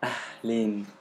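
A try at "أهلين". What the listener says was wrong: Yeah, ahlen. Even softer the ha. It's normal ha. And make it make the ya is more extended. So ahlen. So it's the ya, it's A.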